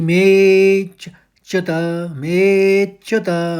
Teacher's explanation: अवग्रह में खींचना पड़ता है, मे को ज़्यादा लंबा खींचेंगे और उसी के संग हल्का सा चौका आघात निकाल लेंगे।